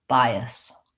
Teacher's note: And in this AS is a reduced schwa sound, like we were talking about earlier in the reduced syllable.